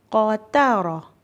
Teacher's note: را بھی موٹا پڑھنا ہے اور قاف بھی موٹا پڑھنا ہے۔ ان دونوں موٹے حروف کے درمیان تا باریک حرف آ رہا ہے تو ہم لوگوں نے اس بات کا دھیان رکھنا ہے کہ تا کو ہم نے موٹا نہیں پڑھنا۔